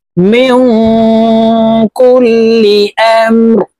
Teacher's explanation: নুন সাকিনের পরে ইকফার হরফটা পড়ছে এই কারণে এই নুন সাকিনকে নাকের ভিতরে লুকাইয়া গুন্নার সহিত পড়ব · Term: ইকফা গুন্না